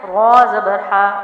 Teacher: چاہے وہ پیش ہو، تو یہاں زبر ہے، را زبر ہا، را کو موٹا پڑھ رہی ہوں کیونکہ را کے اوپر زبر اور پیش ہو تو را موٹا پڑھا جاتا ہے